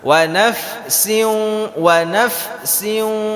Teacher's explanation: bibir kita itu menyentuh dengan Gigi saya di atas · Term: huruf Fa